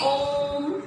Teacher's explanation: प्लुत स्वर कहेंगे जिसमें ह्रस्व और दीर्घ तीनों से अधिक समय लगता है